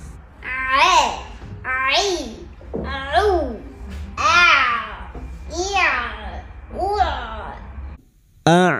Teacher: Maka masuk pada huruf ain sukun. Huruf ain sukun yang memiliki sifat jahr dan tawasud.